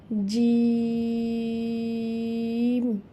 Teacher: চার আলিফ টেনে পড়বো এবং এটি একটু শক্ত করে উচ্চারণ করতে হবে